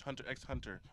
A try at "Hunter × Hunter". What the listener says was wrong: Motherfucker pronounced the X. It's like motherfuckers who pronounce the X is like really dumb. Motherfuckers who just say Hunter.